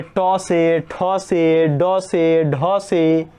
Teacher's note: ट वर्ग है और री, र, मूर्धन्य स, ये सब जो है इन सभी का उच्चारण स्थान मूर्धा होता है